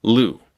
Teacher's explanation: In English, when we say a name like Lou, the back and front of your tongue both come up towards the roof of your mouth.